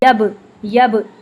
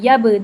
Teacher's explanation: बा को जब हम साकिन फॉर्म में पढ़ते हैं तो इस पे हम कलकला करते हैं। यब यब ऐसे डबल साउंड आती है।